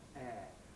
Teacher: Quite a few people say square with a monophthong